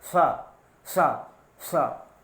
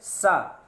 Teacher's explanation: इस पेटचिरवा सा का इसका उच्चारण मूर्धा से होता है, इसलिए इसको मूर्धन्य सा कहा जाता है